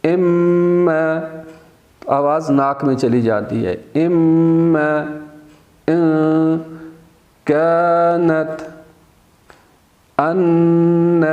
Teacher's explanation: اور اسی طرح سے جہاں پہ ان کے اوپر جیسا میم آیا ہے اس کے اوپر اگر شد آ جاتی ہے تو وہاں پہ ہم آواز ناک میں لے جاتے ہیں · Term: خیشوم